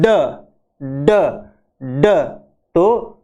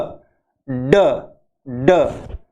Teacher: हमारी जो जुबान है वो एल्वियोलर के जाके लगती है और इसमें वॉइस्ड या कंपन होता है, वॉइस्ड यानी कंपन होना।